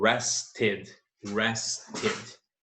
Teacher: ele termina com o som dental, então o ed final, na sua forma passada, esse ed terá o som de ed